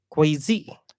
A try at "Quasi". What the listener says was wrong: It rhymes with Tracy. Quasi. You always add that Z in there.